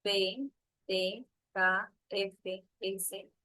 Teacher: se articulan sin vibración de las cuerdas vocales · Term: sordas